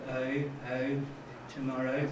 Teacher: evidence of the fronting and unrounding of the second element of oh